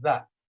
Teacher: You stick the tongue out, and the top teeth and the bottom teeth are literally just biting onto the tip of the tongue.